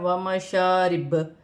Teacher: ومشارب، واو کی صورت میں پیش گر جائے گی اور با ساکن ہو جائے گی، واو کی صورت میں با پر تھوڑا سا قلقلہ ہوگا کیونکہ با حروف قلقلہ میں سے ہے